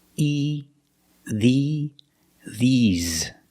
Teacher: But when I say these for something plural, These, I use the long E, like green beans. The mouth is more closed, and you smile a little bit. E, these.